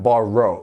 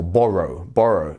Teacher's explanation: if you're going American borrow like you're going to round it off but um British English you want to keep it as flat as possible